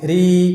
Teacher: kita turunkan pangkal lidah kita sehingga hurufnya menjadi tipis